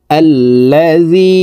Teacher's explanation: এখানে গুন্না নুন সাকিনের পরে ইকফার হরফ কফ আসছে এই কারণে এই নুন সাকিনকে নাকের ভিতরে লুকাইয়া গুন্নার সহিত পড়তে হবে